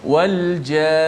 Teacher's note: Contoh yang kedua tu, wal jan, nak wakaf pun kena dengung juga, bukan berhenti wal jan, bukan, tetap kena dengung sebab di hujung itu ada sabdu, maka kita panjangkan gunnah itu.